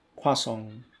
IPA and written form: kwa:ˈsɒ̃ (croissant)